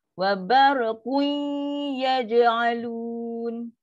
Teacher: Dia 50% je lah. Separuh bunyi nun, separuh bunyi ya. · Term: naqis